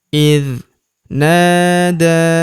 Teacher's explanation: Huruf na kita panjangkan dua harakat karena terdapat tanda alif di depannya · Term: panjangkan 2 harokat